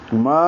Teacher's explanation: ما الف مدہ ہے، 2 حرکات لمبا ہوگا